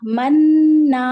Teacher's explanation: حرکت میم فتحہ نون سکون من نون فتحہ الف سکون نا من نا اور غنہ کریں گے دو حرکت